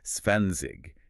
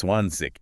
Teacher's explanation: in standard High German, the German you learn in school, and here on the news, that final G softens into an ich